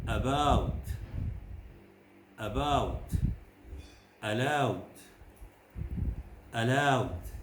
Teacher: as with ooh the first sound is the dominant one and the second is not really reached at all · If in doubt, begin by saying and you will find that the mere fact of having to push your mouth forward towards oo will slightly darken the sound. As with oo, the first sound is the dominant one and the second is not really reached at all. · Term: diphthong, the diphthong ow